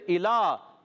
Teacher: اور پھر الا، حمزہ کو خوب واضح کریں گے، لام پر کھڑا زبر ایک الف کھینچنا ہے